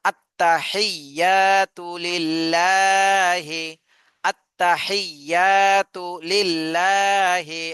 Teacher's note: আত্তাহিয়া তাতে টান দেয়া যাবে না